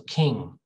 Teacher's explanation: it's like nng together but there's no g sound maybe just a little bit but not a lot that's important · your raise your tongue the back of your tongue all right you block the airway so the sound is actually produced in your nose your nasal cavity